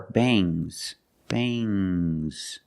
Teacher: have S after NG it makes the nasal sound M but it also makes a little G sound but not a hard strong G